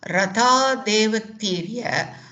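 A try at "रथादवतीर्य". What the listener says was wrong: Ratha Davatirya, no ekara there. Ratha Davatirya. Okay, Ava Upasarga, so Avatirya, like that. Now, Rathat has become Ratad due to softening of Jashtva. So there is a Jashtva Sandhi there. Ratad plus Avatirya, Ratad Avatirya.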